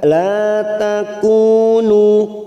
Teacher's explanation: La lam alif 2 harokat. La takunu, kunu masing-masing 2 harokat kita panjangkan